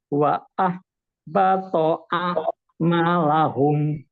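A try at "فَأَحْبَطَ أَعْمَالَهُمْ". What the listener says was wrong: Bukan wa. bukan wawu, Pak. Fa'ah, bukan wa'ah.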